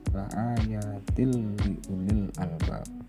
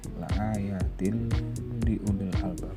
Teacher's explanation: Berarti cara membacanya kasroh tanwin masuk ke huruf lam tapi tidak disertai dengan mendengung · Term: idgham bila gunnah